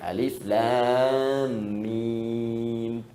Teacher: Alif harful hawa, lam ke lisan, mim di bibir.